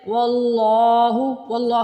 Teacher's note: واللہ میں اللہ کا نام کو موٹا پڑھنا ہے